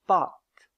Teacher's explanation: C'est-à-dire que pour la prononcer, les lèvres doivent être étiré, écarté. Tandis que pour la production de la voyelle a de pâte, les lèvres sont plus arrondies.